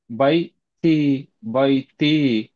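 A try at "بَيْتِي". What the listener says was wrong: பா அல்ல, அதை நாங்க மாத்திக்கிறோம். எப்படி? பே. பை. பை பே தானே. பா என்று சொல்றது பிழையே.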